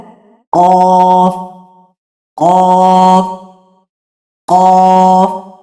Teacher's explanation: زبان کی جڑ اور اوپر کا تالو، ٹھیک ہے، نرم تالو، اس کو جب لگتی ہے نا تو حرف ادا ہوتا ہے